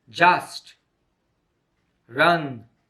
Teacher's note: ah is a single and short vowel sound the mouth is wide open the tongue position is in the center of the mouth